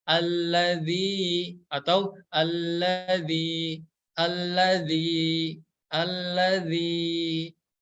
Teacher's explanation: huruf ya yang berharakat sukun maka ini adalah hukum Mad Thobi'i Mad Thobi'i itu cara bacanya dibaca panjang 2 harokat atau bisa diayunkan saja